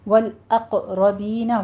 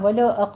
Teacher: وال لام کو سٹاپ کرنا ہے، اور قوف کو پر پڑھتے ہوئے قلقلہ کرنا ہے